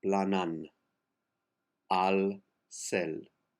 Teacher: Two A's, make them one